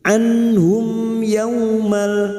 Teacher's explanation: Anhum mim sukun bertemu ya idhar safawi, mim sukun dibaca jelas tanpa mendengung